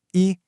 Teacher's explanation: it stays as a first tone, nice, high, and flat